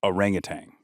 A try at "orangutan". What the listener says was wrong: There's no G at the end.